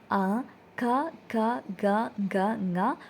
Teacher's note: കണ്ടം ഉപയോഗിച്ചിട്ട് പ്രൊഡ്യൂസ് ചെയ്യുന്ന അക്ഷരങ്ങൾ